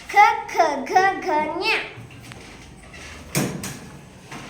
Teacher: ಕ ವರ್ಗದ ಅಕ್ಷರಗಳು ಕಂಠ ಭಾಗದಲ್ಲಿ ಹುಟ್ಟುವುದರಿಂದ ಅವು ಕಂಠ್ಯ ಅಕ್ಷರಗಳು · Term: ಕಂಠ್ಯ ಕ ವರ್ಗ